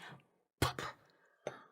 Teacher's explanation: It's an unvoiced sound. So we don't want to feel it on our vocal cords.